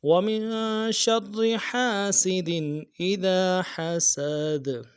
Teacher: حسد دال کے اوپر قلقلہ ہے، دال کو ادا کرنا ہے قلقلہ کو، اور ہا کو گہرائی سے ادا کرنا ہے